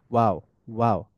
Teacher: Sound comes from the lips forming A circular shape for ওয়াও মাদ।